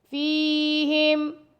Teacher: فا کے ساتھ یائے مدہ ہے، فا کو 2 سیکنڈ تک لمبا کریں گے، فیہم رسولم، را کو موٹا پڑھیں گے، سین کو باریک، اور سین کے ساتھ واو مدہ ہے تو سین کو 2 سیکنڈ تک لمبا کر کے پڑھیں گے۔